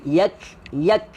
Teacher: Huruf kaf hams, angin. Dia bukannya qalqalah. Huruf angin.